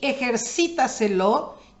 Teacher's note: es sobre esdrújula porque el acento quedó en la cuarta sílaba que es antes de la antepenúltima